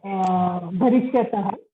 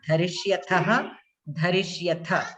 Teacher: the tha mahaprana you have to pronounce at the end. I heard it like alpa prana.